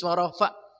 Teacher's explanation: Kalau diputus warofa itu adalah hamzah ya. Jadi ada mesti ekornya sedikit.